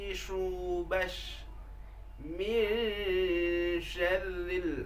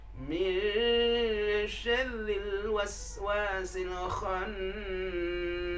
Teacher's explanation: Huruf shin itu makhrajnya tengah lidah, naik ke atas.